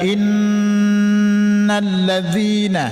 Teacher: Inna yang pertama itu ada alif bertasdid dengan nun, dinamakan wajibul ghunnah. Jadi baca berdengung sekedar panjang 2 harakat.